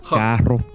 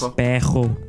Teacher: The normally trilled R, represented by double R in writing, as well as by a single R at the beginning of words, is pronounced ch by many speakers.